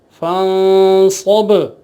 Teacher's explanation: ہجے کرنے میں بھی اور وقف کرنے میں بھی اس پہ قلقلہ کیا جائے گا با ساکن ہونے کی حالت میں